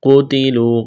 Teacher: قاف کو موٹا کرنا ہے، تا کو باریک کرنا ہے، واو مدہ ہے، ایک الف کے برابر کھینچنا ہے۔